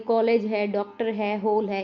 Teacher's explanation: औ। यह ध्वनि अ और ओ के बीच होती है। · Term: आगत स्वर